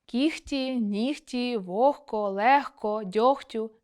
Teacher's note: [г] змінюється на [х] у словах кігті, нігті, вогко, легко, дьогтю тощо. І в похідних, звісно. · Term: дзвінкі оглушуються